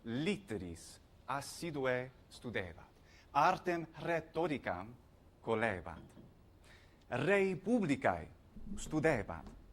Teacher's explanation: Note how he's rolling his R's